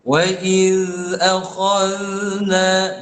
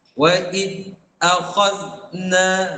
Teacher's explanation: Za tu adalah sifat, satu sifat dia adalah rakhawah. Iaitu suara yang terlepas. Suara tu terlepas.